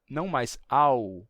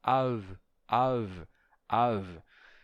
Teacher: o ditongo au se desfazendo pois o segundo elemento estava se tornando fricativo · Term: pronúncia fricativa